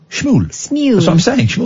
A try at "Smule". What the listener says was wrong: No, you're not Smule. Smule. Don't say sh, say sm.